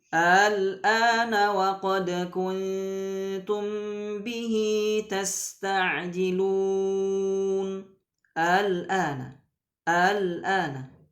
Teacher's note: membaca Hamzah yang kedua ya itu antara Hamzah dan Alif jadi hanya dibaca sepertiganya saja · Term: tashil